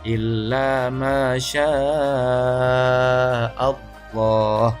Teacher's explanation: Panjangnya 2,5 alif atau 5 harokat atau 2,5 ayunan. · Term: mad wajib muttasil